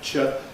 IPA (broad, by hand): ʧ